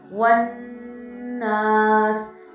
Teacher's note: जब भी उनके ऊपर शक का साइन आता है जो डब्ल्यू की तरह होता है, या हम कहते हैं तशदीद का साइन आता है, तो इसमें हम गुन्ना करते हैं, हमारे नोज़ में आवाज़ जाती है, नेज़ल साउंड होता है। · फॉर एग्ज़ाम्पल अगर एक वर्ड है वन नास, यहाँ पर नून था, उस पर शक थी, मैं नाक में आवाज़ लेकर गई और थोड़ी देर उस आवाज़ को रखा